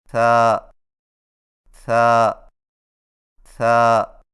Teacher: ثا کی ادائیگی میں زبان کی نوک کو ثنایا علیہ کے اندرونی کناروں سے نرمی سے لگا کر باریک آواز میں پڑھیں